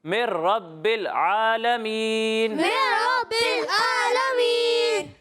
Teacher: اچھا یہ من رب العالمین نہیں پڑھنا، ٹھیک ہے؟ میم کو را سے ملانا ڈائریکٹ